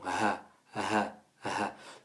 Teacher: laisser passer le son et c'est d' pour cette raison qu' elle ne fait pas partie des lettres où il y a une coupure du son il y a une continuité du son ah ah ah donc bien chercher au fond de la gorge